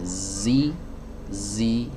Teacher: Kalau saya kasih aliran nafas, z, si, jadi huruf sin. Ya, dan desis yang ada pada huruf zai ini, ya, ini terdengar tajam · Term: sofir